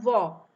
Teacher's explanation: व दांतों में भी टच हो रहा है और होंठों में भी, अतः दोनों के संयोग से व का उच्चारण किया जाता है। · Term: दंतोष्ठ्य